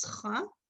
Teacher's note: most Israelis do not distinguish between the chet and the chaf. They read it as cha